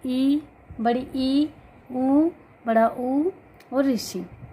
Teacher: जैसे इनके मुख लगभग पूरा बंद, जैसे ई, बड़ी ई, ऊ, बड़ा ऊ और ऋषि। इनके उच्चारण में लगभग मुंह अपना कम ही खुलता है, तो इसलिए इन्हें संवृत्त स्वर बोला गया है।